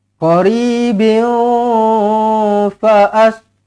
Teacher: Kalau sambung, qaribin fa'as. Kalau nak sambung, dengungkanlah. Tanwin tak selari bertemu dengan fa, ikhfa hakiki